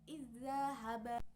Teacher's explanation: Contoh bacaan idgham mutamatsilain ini adalah pada huruf zal sukun bertemu dengan huruf zal berharokat fathah, sehingga cara membacanya adalah dengan cara memasukkan huruf zal sukun ini kepada huruf zal berharokat fathah sehingga dibaca seperti membaca satu huruf yang ditasdidkan